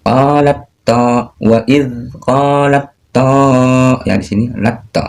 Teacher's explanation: Huruf dal dan ta berasal dari satu makhraj yang sama, yaitu ujung lidah bertemu dengan pangkal gigi seri atas. Huruf dal tersifati oleh jar atau syiddah sedangkan huruf ta tersifati oleh hamas dan syiddah, ya, istifal dan infitah dan ismat.